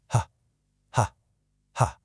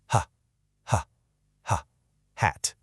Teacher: gentle push of air from your chest, making a really breathy sound